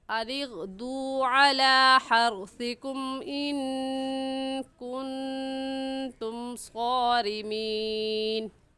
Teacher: ان اغدوا میں دال واو پیش دو، اس کو کھینچیں گے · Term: واو مدہ